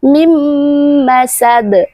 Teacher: hukum bacaannya dibaca dengung dua harakat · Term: idgham bighunah